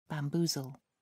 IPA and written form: bæmˈbuːzəl (bamboozle)